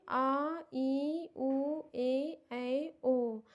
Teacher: इसको पढ़ने में ज़्यादा टाइम लग रहा है, इसीलिए ये दीर्घ स्वर में आता है